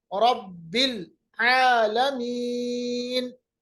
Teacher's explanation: वक्त की सूरत में हम नून को साकिन बनाएंगे और या को थोड़ा लंबा अदा करेंगे